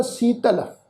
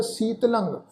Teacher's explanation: पर लले उत्ते टिप्पी की मात्रा का नासिक उच्चारण होएगा